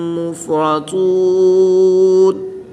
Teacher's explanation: نون مشدد اور میم مشدد میں ہمیشہ غنہ ہوتا ہے، تو یہاں پر غنہ کریں گے۔ طا حروف مستعلیہ میں سے ہے تو اس کو پر یعنی موٹا پڑھیں گے